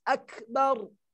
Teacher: Nah, kaf itu sifat hurufnya ada desis. Akbar. Minimal itu desisnya kita sendiri dengar.